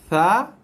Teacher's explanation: Huruf tha, huruf yang paling nipis dan huruf yang paling banyak keluar hembusan angin, hembusan nafas.